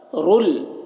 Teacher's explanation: تنوین کو لام سے ملا کر پڑھیں گے بغیر غنہ کے، اس کو ادغام تام کہتے ہیں، ادغام تام.